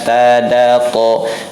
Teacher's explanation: Tempat keluarnya dari ujung lidah bertemu dengan pangkal gigi seri atas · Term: satu makhraj